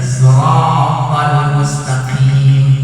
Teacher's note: mustaqim harus ada nafas yang keluar dikit. Yang mustaqim salah secara hukum sifatul huruf.